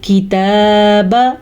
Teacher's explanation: تا کے اوپر کھڑی زبر ہے تو اسے ہم کھینچ کے پڑھیں گے